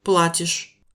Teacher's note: Si on reprend Плачу. je paye, tu payes se dit Платишь. accentué sur la première syllabe